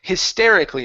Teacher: Now we don't want to pronounce the AL. The L yes, but the A no.